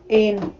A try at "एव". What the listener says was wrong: एन। बच्चे, न तो कहाँ है? ये वाह है ना बच्चा। एव, पक्का एव या ईव या एव?